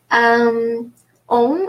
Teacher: On is nasal because it's at the end of the word.